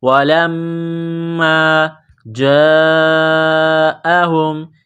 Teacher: ہیں وَلَمَّا جَاءَهُمْ لام کو میم کے ساتھ پلس کرنا ہے میم مشدد ہے غنہ کریں گے